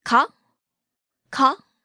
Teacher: Note the rising intonation.